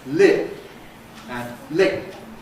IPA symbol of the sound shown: lɪp̚